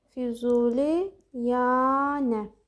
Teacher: Füzuliyanə sözündə iki sait uzun tələffüz olundu. Biri kökdə, biri şəkilçidə.